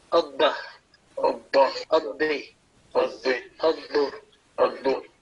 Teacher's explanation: You see, because in mushaddad letter, a letter having a tashdid, we have to pronounce it, giving double time or stressing, emphasizing, because it is a double letter.